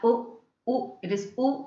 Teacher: the thing the lips are oh oh it is oh so it is rounded then vowel just above half close okay so close half close and just above it you can